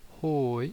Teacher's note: you first increase the tone and then you decrease the tone